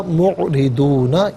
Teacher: रा के नीचे ज़ेर है तो रा को बारीक करके पढ़ेंगे